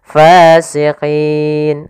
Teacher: karena sebelumnya ada ya sukun, kemudian ada 2 sukun, maka yang pertama dipanjangkan dulu karena di sini menunjukkan huruf mad. Setelah itu baru nunnya dimatikan. Fasiqin. Nah, dalam hal ini untuk panjang mad arid disukun sendiri kita boleh memanjangkan sepanjang 2 harakat, 4 harakat atau 6 harakat. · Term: mad arid lisukun